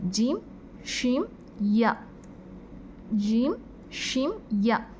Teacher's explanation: இது நாக்குடைய நடுப்பகுதியிலேருந்து வருது. நம்மளுக்கே அது நல்லா தெரியும், அந்த நாக்கின் நடுப்பகுதியிலேருந்து நம்ம இந்த வார்த்தையை உச்சரிக்கிறோண்டு.